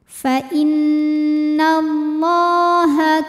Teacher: Thobi'i muqaddar karena ada baris fathah tegak di atas huruf lam cara bacanya panjang lamnya dua harakat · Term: Mad Thobi'i muqaddar